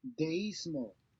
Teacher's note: the diphthong is broken and the two vowels are pronounced separately. Deísmo, So we have a written accent or the letter I, and by definition, they will be pronounced separately.